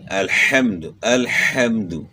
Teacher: ہا اور عین دونوں گلے کے درمیان سے ادا ہوتے ہیں، تو دونوں کو آپ نے گلے کے درمیان سے ادا کرنا ہے، ان حروف کو چینج نہیں کرنا۔